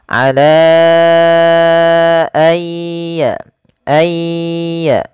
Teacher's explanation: ditahan gunnahnya, ditahan bunyi suaranya sepanjang 2 harokat. Ai ditahan ya teman-teman.